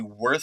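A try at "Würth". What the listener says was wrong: No, I think the W is a V. The W is a V in German.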